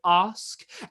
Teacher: a vowel turns a little bit farther into ah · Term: ask list